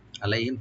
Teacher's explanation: আলাইহিম তাদের জন্য, আইনটাকে অবশ্য রাইট দিবেন, লাই এখানে হরফে লিন, আলাই হিম এখানে মিম সাকিনে জাহার করবো আমরা, এখানে গুণ হবে না